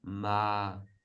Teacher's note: middle will be ma and with almost no change